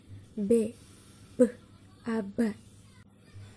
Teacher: Teman-teman bisa lihat di sini sudah ada contoh fonem B yang cara artikulasinya berada di plosif atau letupan dan tempat artikulasinya berada di bilabial atau dua bibir